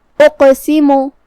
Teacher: قاف حروف التفخیم میں سے بھی ہے تو ہمیں اسے بھاری آواز میں ادا کرنا ہے، جو کہ یہاں قاف ہے اور اس پہ جزم ہے، لہذا یہاں قاف کا حکم ہوا قلقلہ. قلقلہ کا معنی ہے حرف ساکن کو ہلانا، تو ہم قاف کو ہلاتے ہوئے یہ کلمہ کو ادا کریں گے. اقسمو، آخری میں میم پہ پیش ہے تو ہمیں میم کو پیش سے ادا کرنا ہے اور اسے ظاہر کرنا ہے.